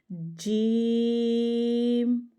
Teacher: اگر جیم دیکھیں تو جیم پہ مد ہے، زیادہ لمبا کریں گے، اور نکالنا کہاں سے ہے کہ زبان کا درمیان اٹھانا ہے اور تالو کے اوپر لگا دینا. ٹھیک ہے، جیم، باقی سب سے لمبا ہوگا یہ جیم.